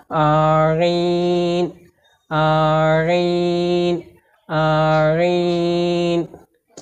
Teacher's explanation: আইন অক্ষর কণ্ঠনালীর মধ্যখান থেকে বা মাঝখান থেকে একটু সেপে পড়তে হয়।